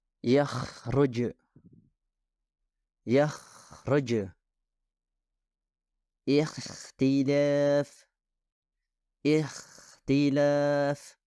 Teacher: suara mendengkur dihasilkan di area yang lebih dekat dengan bukaan mulut daripada tenggorokan dan kesalahan ini disebabkan oleh suara Ko yang berlebihan yakruj yakroj